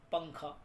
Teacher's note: बीच में पा, फिर नून की आवाज़ आ रही है, फिर खा